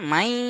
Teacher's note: এখানে অল্প অল্প অস্তিত্ব থাকবে দেখেন মিম ইয়া জবার মাই এইযে মাই বলতে গিয়ে একটা নুন সাকিনের হালকা আওয়াজ আসছে না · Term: ইদগামে নাকিস